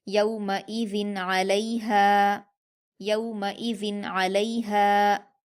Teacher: من غیرہ، من غیرہ، یومئذ علیہا، یا پر واولین ہے، اس کو معروف آواز کے ساتھ جلدی پڑھیں گے، میم پر حرکت جلدی پڑھیں گے، حمزہ پر حرکت جلدی پڑھیں گے، ذال پر تنوین ہے اور تنوین کے بعد حروف اظہار میں سے عین آیا ہے، اس لیے ہم تنوین کی آواز کو ظاہر کر کے بغیر غنہ کے جلدی پڑھیں گے